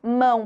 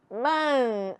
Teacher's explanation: É o som da vogal que se prolonga. Eu não escuto o som da consoante. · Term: ditongo nasal